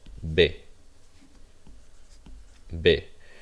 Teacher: V's and B's are pronounced the same in Spanish. There's no difference between the two.